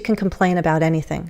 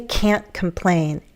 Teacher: when you say can't, it tends to be a little more emphasized.